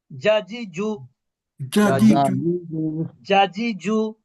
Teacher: এই জিম অক্ষরটা একটু শক্তভাবে উচ্চারণ করতে হয়, কারণ এটা জিহ্বার মধ্যভাগ থেকে উচ্চারিত হয়। আর জিহ্বার মধ্যভাগ উপরের তালুর সাথে যুক্ত হয়, স্পর্শ করে।